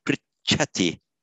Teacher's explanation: Whenever you get an aspirated consonant that is doubled, only the first part of it, sorry, only the unaspirated part is doubled. So when you double a ch, it becomes just unaspirated plus aspirated.